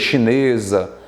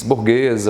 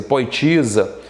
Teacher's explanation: Porque um S entre duas vogais tem som de Z.